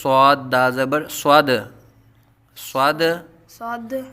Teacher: دال حروف قلقلہ میں سے ہے، دال ساکن میں قلقلہ خوب ظاہر کریں گے